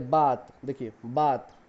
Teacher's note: ब एक ओष्ठ वर्ण है, मतलब ये ओठ से ही बोला जाता है, दांत का प्रयोग इसमें नहीं होता है।